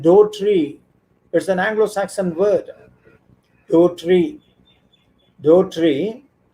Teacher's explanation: the first syllable possessed usually a back vowel, and this back vowel was fronted by the influence of the E sound standing in the second syllable. For example, I tell you a word, do tree.